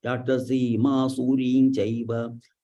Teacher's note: So there is Anuswara followed by Chakara, Ny has to be used.